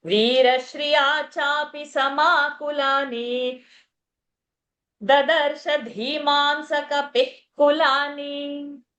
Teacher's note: श्र एक संयुक्त है, रा पर दबाव होगा।